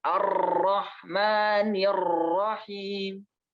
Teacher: Ra di sini tuh tasydid ya, teman-teman. Jangan terlalu banyak getaran.